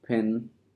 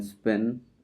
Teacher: Pa in pin is aspirated. Pa in spin is unaspirated. These two sounds are slightly different phonetically, but they do not they do not change the meaning of the word.